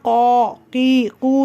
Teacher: கா செய்யும்போது பாருங்க உங்களோட பின்னாக்கு தூக்கி இருக்கும்